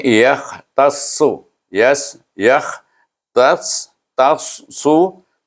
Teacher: Kemudian tas ta, ta dengan sad ni dia kalau ikut mahraj dia sama aja, cuma sad ini dia isti'la sikit, terangkat lidah kita